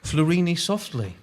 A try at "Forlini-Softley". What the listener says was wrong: Forlini-Softley. I think you just misplaced the L.